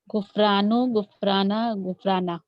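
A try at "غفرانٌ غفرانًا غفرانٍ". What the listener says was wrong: زبردست.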